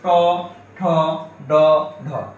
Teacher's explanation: লক্ষ্য রাখো ট স্বাভাবিকভাবে আমার সাথে বল ট ঠ ড ঢ এগুলো উচ্চারণের সময় দেখো তোমার মাড়ির সাথে উচ্চারিত হচ্ছে